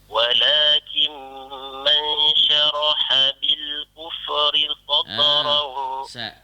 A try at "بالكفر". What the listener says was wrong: Minta maaf, kuf jangan baca kufri, kufri. Jangan lantun, jangan tawallud gaya tu. Kufri. Walakin man syaraha bil kufri sadra.